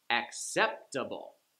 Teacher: Acceptable, Like the 4-syllable words, it's the third from the last syllable that gets the stress